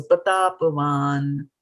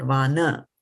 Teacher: That there is very little emphasis on the vowel there. So actually there's no vowel attached to it. It's a pure N.